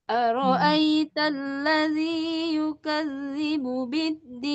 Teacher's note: Awal datar, akhir tinggi.